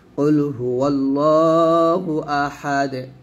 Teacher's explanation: এই দাল 2 পেশ 2 জায়গায় আমরা দালটাকে সাকিন করে ফেলছি, এবং দাল যেহেতু কলকলার হরফ, তাই এখানে আমাদের কলকলায় আদায় করতে হবে